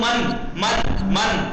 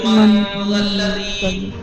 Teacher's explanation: حکم یہ لاگو ہوا کہ ناک کی فضا سے نون ادا ہوگا کھینچ کے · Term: اخفاء